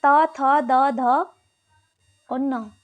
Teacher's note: जिनके उच्चारण में जीवा की नोक ऊपरी दांतों का स्पर्श करती है दंत्य व्यंजन कहलाते हैं, जैसे त थ द ध और न।